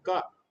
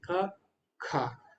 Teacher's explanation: अल्प प्राण में हमको कम वायु छोड़नी पड़ती है मुंह से क लेकिन महाप्राण को बोलने के लिए ज्यादा वायु छोड़नी पड़ती है